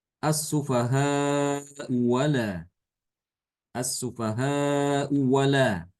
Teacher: Ya Hamzah pertama itu kan harakatnya dah ya harakatnya dah sehingga Hamzah yang kedua itu diganti dengan huruf mad yang sesuai dengan harakat Hamzah pertama domah yang sesuai dengan dhamma adalah wawu ya asufahau wala itu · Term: diibdal